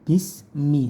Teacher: Sinnya tipis saja, bis tidak boleh memantul bismi, enggak pakai bisa tapi bismi, si tipis seperti huruf S biasa.